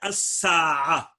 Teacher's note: سین صرف اپنے مقارب لام تعریف کا مدغم فی ہے